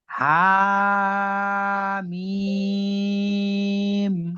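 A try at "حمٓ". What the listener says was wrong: হাটাও অল্প টানতে হবে, মিমটা বেশি। হামিম।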